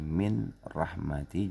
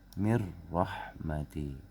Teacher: Nun mati ketemu ro, tadinya min rahmati jadi mir rahmati. Tidak boleh mirroh, ya, ditahan nggak boleh.